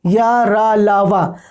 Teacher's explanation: रा को लुंठित कहा जाता है और ला को पार्श्विक कहा जाता है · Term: अंत्यस्थ व्यंजन